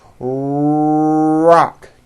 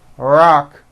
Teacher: notice how my lips are coming forward and my tongue moves back in my mouth and I push out the r sound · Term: American R sound